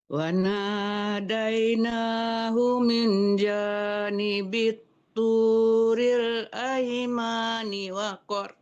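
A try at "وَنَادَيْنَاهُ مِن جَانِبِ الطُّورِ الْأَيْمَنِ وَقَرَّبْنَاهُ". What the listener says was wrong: Ma-nya tidak panjang ya, Bu. janibit turil aimani wa qarrab. Kenapa dipanjangkan ma-nya?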